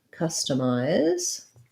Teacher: we have first syllable stress in customized just like the beginning is just like the word custom um and so we want to be long on the cusp